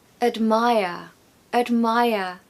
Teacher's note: We haven't got a strong vowel sound in that first syllable because the second syllable is stressed. And the rule goes that the schwa sound falls on the syllable that is unstressed.